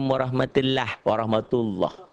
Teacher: mengucapkan huruf lam dengan tebal sampai memenuhi mulut ketika mengucapkannya